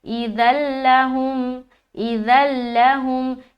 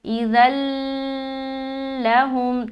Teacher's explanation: بلا کے معنی ہوتا ہے بغیر اور غنہ یعنی کہ غنہ کے بغیر والا ادغام یعنی کہ ملائیں گے، صرف ملائیں گے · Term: ادغام بلا غنہ